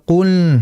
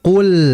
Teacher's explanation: Kemudian berikutnya adalah ketika membaca qul, ini seperti tadi saya itu dengar ada sedikit unsur hidung. Nah, lam ini dia makhrajnya atau pengucapannya ini bukan lewat hidung, melainkan lewat lidah.